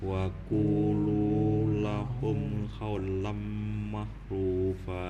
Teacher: Karena itu lu-nya ada waw juga, jadi panjangnya 2.